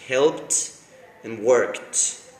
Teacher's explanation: the sound of the ed is like a T because of the consonant that is before